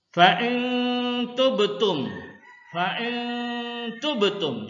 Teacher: Jadi nun ini jangan dijelaskan, samar ya. · Ikhfa hakiki seperti yang Bapak jelaskan tadi, ini hurufnya 15, pengertiannya samar atau menyamarkan menurut istilah jika terdapat nun mati atau tanwin bertemu dengan salah satu huruf. Ikhfa hakiki huruf nun mati dibaca samar ya.